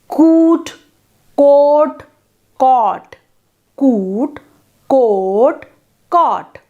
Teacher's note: The back vowels, like the front ones, descend from high through mid to low in a continuous sequence. You can observe this by pronouncing the words coot, coat and cot and then just their vowels.